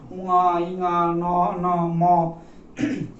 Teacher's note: নাসিকা গহ্বর দিয়ে বার হওয়ার ফলে নাসিকার যে প্রাচীরে সে কম্পন সৃষ্টি করে এবং একটা সানুনাসিক সুর যোগ হয়, যেমন উঙা ইঙা ন ন ম, এই যে একটা সানুনাসিক সুর এই শব্দগুলো ধ্বনিগুলোতে যুক্ত হয়ে যাচ্ছে, তাই এদেরকে বলা হচ্ছে নাসিক্য ধ্বনি।